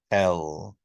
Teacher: when you say an l or l that you put your tongue there on the alveolar Ridge just like a d so a d and an L your tongue is touching the · when you make an L can you feel where that air is escaping it comes around the sides